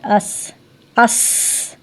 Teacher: اس آواز تھوڑی سی جاری رہے گی، ٹھیک ہے نا، اس آواز جاری رہے گی، فوراً بند نہیں کرنی۔ اگر فوراً بند ہوگی تو اس کے اندر جو ہے صفت رخوت نہیں ہوگی، پھر اس کے اندر کیا ہوگی؟